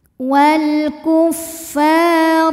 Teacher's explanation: Sebab ada huruf alif yang didahului harokat fathah. Maka huruf fa cuman boleh dipanjangkan 2 harokat saja. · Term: mad tabi'i zahiri